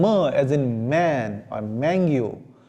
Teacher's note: the initial sound where the air is released through our nostrils are called nasal sound